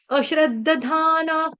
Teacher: यह वाले विसर्ग का उच्चारण आधा फ करेंगे क्यों क्योंकि यहां पर प आ रहा है